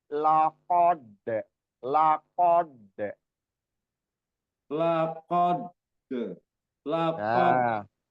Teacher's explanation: Tebal dulu diqqof baru ke dalnya tipis. · Iya, jadi jangan dalnya jangan keikutan tebel kayak qofnya, tapi tebel dulu di qof baru ke dalnya tipis